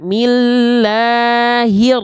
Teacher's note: langsung masuk ke huruf r-nya alif lamnya tak dibaca ya ya jadi hi-nya pun enggak dipanjang-panjangkan langsung gaskan masuk ke